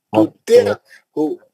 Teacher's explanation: مد اصلی ہے، تطیعہو، تطیعہو عین کا آواز نکالنا ہے نا، تو کے زیر کو عین سے ملانا ہے